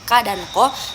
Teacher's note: velar, itu bunyi dari pangkal lidah dan langit-langit lunak